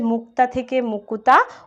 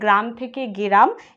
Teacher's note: উচ্চারণের সুবিধার জন্য পদের মধ্যে ব্যঞ্জনবর্ণকে ভেঙে যদি স্বরবর্ণের আগম ঘটানো হয় তাকে বলা হয় স্বরভক্তি